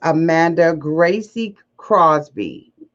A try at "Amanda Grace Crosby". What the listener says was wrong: Just Grace. it's spelled right, but it's pronounced just Grace.